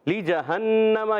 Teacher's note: نون مشدد، ایک الف کا غنہ بھی ہوگا